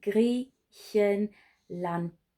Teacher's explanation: So if you have a look at this word, you've got obviously the g at the beginning there, then you've got your e here, so gris, and then you have your ch sound, so Griechen, and it finishes with a d, so t at the end there